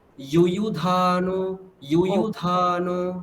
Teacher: দ্বিতীয় ইউকারে আর দীর্ঘ আমরা বলবো না।